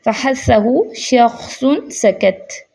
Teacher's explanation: ان میں ارتعاش یعنی کہ وائبریشن، حرکت کی کمی ہوتی ہے، اس لیے سانس کے ساتھ ہوا زیادہ ہوتی ہے اور آواز جو ہے وہ کم ہو جاتی ہے۔ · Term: حروف محموسہ